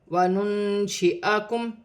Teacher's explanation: نون ساکن میں اخفا ہوگا کیونکہ شین حرف اخفا میں سے ہے